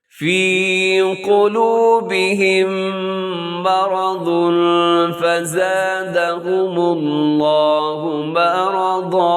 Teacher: فی کو لمبا کرنا ہے اور قلوبی کے قوف کو موٹا کرنا ہے، اور با کو مجھول نہیں پڑھنا، قلوبہم نہیں ہوتا.